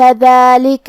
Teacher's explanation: کلمت ذالک میں حرف الدال پہ کھڑا زبر ہے تو یہاں مد الف ہے، ہم اپنی آواز 2 مد کے برابر لمبی کریں گے